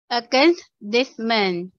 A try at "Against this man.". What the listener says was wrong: Yes, good job.